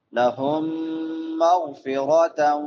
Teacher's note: لهم میم ساکن کے بعد یرملون میں سے میم ہے، ادغام مع الغنہ کریں گے